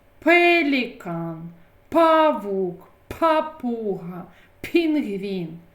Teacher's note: приголосний нам перешкоджають промовити цей звук губи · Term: звук п